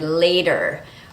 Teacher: when t is between two syllables and the second syllable is not stressed, the T changes to a fast D sound · we call this sound a flap because the tongue comes to the top of the mouth and just makes a very quick D sound